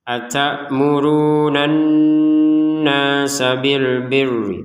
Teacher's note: kemudian nunnya ini harokatnya fathah, ada alif, kita panjangkan dua harokat